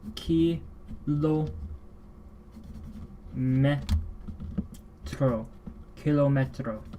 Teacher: And that's to show that they both sound like k. The k are a fun little plosive in the back of the mouth